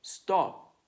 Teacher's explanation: Voiceless sounds don't cause your vocal cords to vibrate. If you pronounce stop, the P doesn't make your vocal cord vibrate.